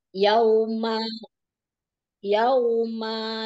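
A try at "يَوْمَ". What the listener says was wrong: mahnya gak panjang. Yauma.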